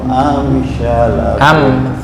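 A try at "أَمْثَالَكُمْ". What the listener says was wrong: Amsalakum. Sa, bukan sya. Amsalakum.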